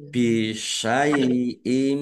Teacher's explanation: tanwinnya tidak dibaca langsung masuk ke huruf mim ya dengan mendengung · Lam fathah berdiri mat tobi'i, panjang 2 harokat. Bisyai'im, kasroh tanwin bertemu dengan huruf mim, bacaan idgham bi gunnah, masuk dengan mendengung, yaitu mendengung mim ditandai mimnya ada tasdidnya.